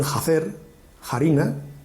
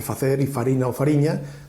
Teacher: la llamada H aspirada, que correspondería a la F inicial de las otras variedades. Las variedades orientales dicen jacer, jarina, en cuenta de el facer y farina o fariña de los otros dos bloques.